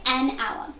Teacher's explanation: The H in hour is silent, and instead hour actually begins with the sound ow. And that's a vowel sound. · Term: silent H